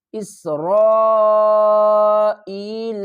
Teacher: سین کو جب ہم پڑھیں گے تو سیٹی کی آواز آئے گی